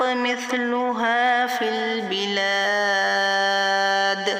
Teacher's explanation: قلقلہ ہوگا وقف کریں گے تو، کیونکہ یہ زیر ہے نا اس کے نیچے، دال کے نیچے، تو جب ہم وقف کریں گے تو اس کو بدل کر سکون میں چینج کر دیں گے، اور جب دال کے پاس سکون آئے گی تو یہاں پر ہم قلقلہ کریں گے، قلقلہ کبرا